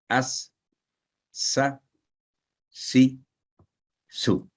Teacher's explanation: जबान की नोक को सामने के नीचे वाले दांतों के किनारों से लगाने से यह हरफ अदा होता है और ये भी हल्की सीटी की आवाज पैदा करेगा और ये बारीक यानी शार्प आवाज होगी उसकी। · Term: सीन